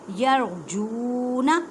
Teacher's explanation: را کو پر پڑھیں کیونکہ را ساکن سے پہلے زبر ہے